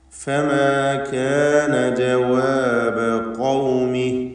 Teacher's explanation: ഖൗമി എന്ന് പറഞ്ഞപ്പോൾ ഖാഫിന് മാത്രമാണ് തഫ്ഖീം നൽകേണ്ടതായിട്ടുള്ളത്